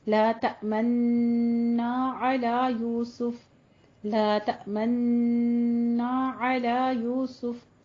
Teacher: اشمام کیا ہے کہ آپ نے لا تأمن کے اینڈ پہ آپ نے راؤنڈ کر دینے اپنے ہونٹوں کو